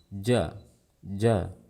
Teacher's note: itu bukan hams tapi itu merupakan suara lepasnya lidah dari makhrajnya